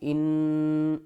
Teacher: نون مشدد ہے، گنہ کریں گے، حمزہ نون زیر ان، آواز ناک میں جائے گی